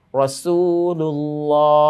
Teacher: এইযে দালের উপরে তানভন তানবিনের পরে র এসেছে যেই রটা নুন সাকিনের গুন্নাহ ছাড়া ইদগামের একটি উদাহরণ